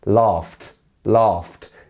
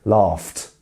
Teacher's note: It's the f sound, f. No vibration at all.